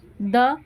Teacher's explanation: साथ में मिलने पर उसका तुरंत प्रभाव अपने ले लेते हैं त और द के उच्चारण में जीभ जो है हमारी वो ऊपर के दांत का स्पर्श करने आ जाती है